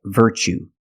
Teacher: the pronunciation you see Tue as the second second syllable so the t is pronounced CH like chicken